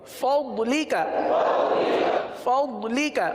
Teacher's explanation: زبان کی کروٹ اوپر کے داڑوں کی جڑ سے یہ ضاد کی ادائیگی ہوتی ہے